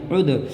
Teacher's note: اس جزم والی دال میں ملائیں گے، عین دال پیش عد، دال میں قلقلہ کریں گے کیونکہ دال حروف قلقلہ میں سے ہے اور دال کے اوپر کیا ہے، جزم کی نشانی ہے، عد،